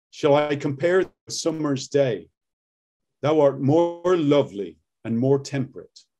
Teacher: It's got like a harder R sound, right? It's a rhotic accent.